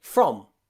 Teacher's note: that F and the R almost become one sound.